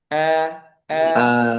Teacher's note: Jadi A, antara E sama A gitu aja. Tengah-tengahnya. A, a, a. A, Jangan terlalu A, A, A, nah, itu enggak. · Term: fathah